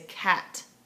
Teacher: I tend to put much less rounding on it and say cat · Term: the a sound